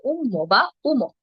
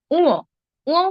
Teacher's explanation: খানিকটা নাকি স্বরে হবে উচ্চারণ হবে উঁ